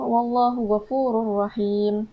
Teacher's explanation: di mana hukum tajwidnya pada huruf ra yang terdapat tanwin dan bertemu dengan huruf ra. Jadi di situ kita tidak perlu dengungkannya.